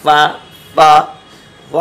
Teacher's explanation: ऊपर के दांत नीचे के होंठ से मिलकर फ़ा अदा होता है